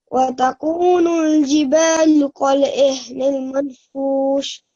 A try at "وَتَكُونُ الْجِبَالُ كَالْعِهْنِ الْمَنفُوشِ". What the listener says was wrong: Okay, you said it right, manfush, but now you are changing it to manfus. And the reason why I asked you to repeat this verse is because the first time you also said manfus, which is not right.